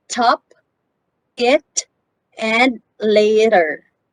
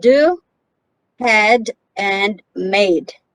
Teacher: They are produced in similar ways, but the t sound is voiceless and the d sound is voiced.